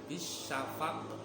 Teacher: Contoh, fala uqsimu bisyafaq, itu sebenarnya membacanya bisyafaqi. Berhubung itu berhenti ataupun waqaf, membacanya bisyafaq, qafnya mantul. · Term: qalqalah